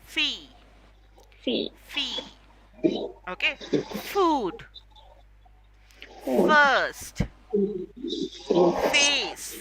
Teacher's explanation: have to make sure the upper teeth are touching the lower lip